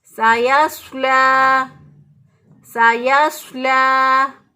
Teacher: दोनों का मखरज एक है। दोनों की अदायगी में सीटी जैसी आवाज़ या चिड़िया जैसी आवाज़ आएगी, लेकिन जो है सीन बारीक होता है और स्वाद जो है वो मोटा होता है। · सीन को बारीक और स्वाद को मोटा पढ़ेंगे